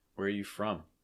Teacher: stress is typically going to be on from although you could also put a little bit of stress on where